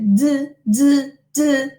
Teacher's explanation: Okay, so d, d, d, there is vibration of the vocal folds. Okay, and then I said that it is alveolar, not dental as in Spanish.